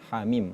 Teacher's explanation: membacanya kalimat hamim itu dua harakat. Tidak boleh lebih dari dua harakat.